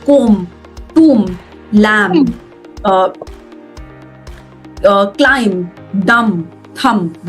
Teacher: कोई भी word जो MB पे end होता है उसमें B silent होता है.